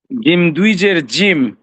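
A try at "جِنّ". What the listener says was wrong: জিম না জিন দন্তন্য হবে শেষে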